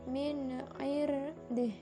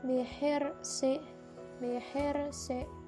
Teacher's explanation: min irdih, ro-nya itu dibaca tafkhim. Dan yang kedua, kalimat kedua bihirsi, bihirsi itu dibaca tipis.